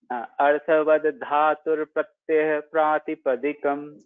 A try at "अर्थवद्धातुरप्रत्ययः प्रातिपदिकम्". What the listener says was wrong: Again, अर्थवद धातुर प्रत्ययः. Full ra you have to pronounce that. अर्थवद धातुर प्रत्ययः.